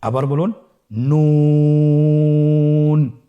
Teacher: নুন হরফটির উচ্চারণ স্থান হচ্ছে জিহ্বার আগা তার বরাবর উপরে তালুর সঙ্গে লাগিয়ে উচ্চারিত হয়।